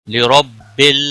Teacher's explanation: را کو زبر کی وجہ سے پر پڑھیں گے، لام ساکن کو ہلانا نہیں.